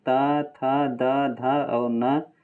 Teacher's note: इसके अंतर्गत त, थ, द, ध और न ये सभी को दंत से बोलते हैं